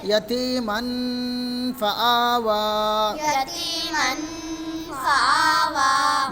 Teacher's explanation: دو زبر کی تنوین کی آواز کو دو زبر کی تنوین کی آواز کو ناک میں چھپا کر ناک میں چھپا کر غنہ کے ساتھ پڑھیں گے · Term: اخفاء حقیقی